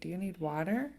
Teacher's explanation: That's how we do it in English, right? Do you need water? Our tone goes up.